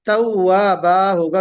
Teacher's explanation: وقف مع الالف، وقف آپ الف پڑھتے ہوئے کریں گے